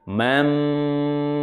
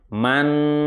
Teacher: Mamma tidak dibaca begini manma tidak mati n tetapi langsung masuk kepada mimnya dengan cara merapatkan bibir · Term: Idham bighhunah